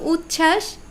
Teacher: উচ্ছ্বাস এই এখানে আবার ব ফলা উধাও